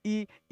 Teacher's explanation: ई जब हम बोलेंगे तो जीभ का अगला भाग कंपन करेगा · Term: अग्र स्वर